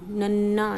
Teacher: ਜਦੋਂ ਅਸੀਂ ਬੋਲਦੇ ਸਾਡੀ ਜੀਭ ਤਾਲੂ ਨਾਲ ਲੱਗਦੀ ਹੈ, ਕਠੋਰ ਤਾਲੂ ਨਾਲ